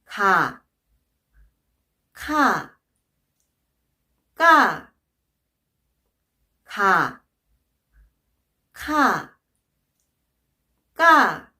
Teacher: the difference among those consonant sisters comes from the amount of air coming out of your mouth when pronounce a certain letter